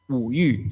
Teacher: is the word used for desire fourth tone